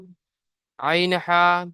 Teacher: 2 নম্বর মাখরাজ হলকে বা কণ্ঠনালীর মাঝখান হতে উচ্চারিত হয়।